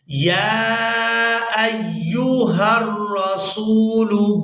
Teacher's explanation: حمزہ کو یا مشدد کے ساتھ ملائیں گے تو سختی کے ساتھ ادا کریں گے